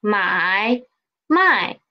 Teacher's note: if i read the second word as the neutral tone then it means business